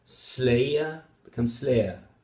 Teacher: smoothing means that we sort of skip the second element of the diphthong so we are lazy we don't want to pronounce everything and we lengthen that first element a bit and so you end up with two vowel qualities instead of